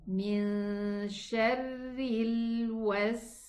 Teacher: The sin sukoon has rakhawa. It has softness. Okay? It runs. So the running time of the sin is longer than the running time of the lam sukoon.